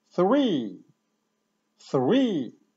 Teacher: w naszym słówku three jest bezdźwięcznie. Koniuszek języka, między zęby, dmuchamy.